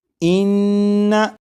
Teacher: आप गौर करिएगा कि नून मुशद्दद की अदायगी के वक्त ज़बान तालू से लगेगी